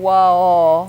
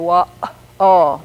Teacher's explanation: WOW with just vowels after the w we say wha oh there's that little interruption that catching the throat in the middle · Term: glottal stop